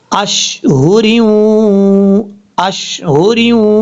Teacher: تو یہاں را کو جب واو سے کنیکٹ کریں گے تو را کے نیچے دو زیر ہیں، یہاں پہ بھی ادغام یرملون ہوگا غنہ کے ساتھ